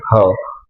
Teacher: कंठामधून हवा जी बाहेर येते ती बाहेर येत असताना कुठेही ती आढवल जात नाही आणि पूर्णतः बाहेर येते त्याला म्हणायचं महाप्राण ह अशा प्रकारे बघा महा महाप्राणमध्ये एकच वर्ण